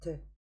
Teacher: звук «т» – глухой, парный, твердый, парный